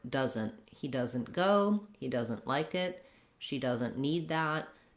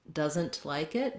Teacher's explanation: In the word doesn't, you'll often notice that when a native speaker says this word, he or she doesn't say that T sound. So we use what's called a stopped T there, which means in order to perceive that I'm saying T, I need to make that N very short